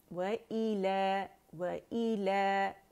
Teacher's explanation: ई sound होगी हमजा की और अक़सुल हल्क से निकलेगा